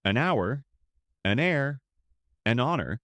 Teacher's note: We use an because the h is silent.